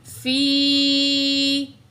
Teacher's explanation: جب بھی یا ساکن ہوگی ما قبل زیر ہوگا تو وہ یا مد ہوگا، 2 سیکنڈ کھینچ کے پڑھیں گے